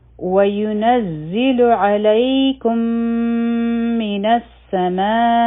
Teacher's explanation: ما حرفی مد داو، مخی چونکه حمزه راغی، نو دا متصل مد جوړ شو، او دا به 4 حرکه راکاږو